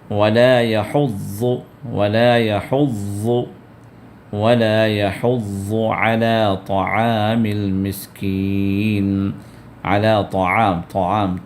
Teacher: طا کو پر کرنا ہے اور عین کو بھی دبا کر ادا کرنا